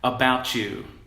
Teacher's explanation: What it is we're kind of converting, we're getting lazy on how we handle the T here, and we're turning it into a non-voiced sibilant fricative. And I would encourage you to try this, to turn this T into a stopped T. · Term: chew sound